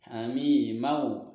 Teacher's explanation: Hamimau, nah ini masuk ke dalam hukum idgham bi gunnah karena huruf mim di sini berharokat fathah tanwin bertemu wawu, maka masuk dengan dengung dan ditahan 2 harokat